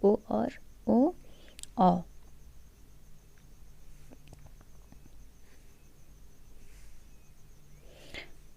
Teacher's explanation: कंठ प्लस ओष्ठ, तो ओष्ठ से बोलने वाला ओ है और कंठ से अ और आ, तो अ ओ मिलके क्या बना, ओ बना, और अ प्लस बड़ा ओ मिलके बन गया औ, तो इसलिए इसका नाम कंठोष्ठ कहा गया।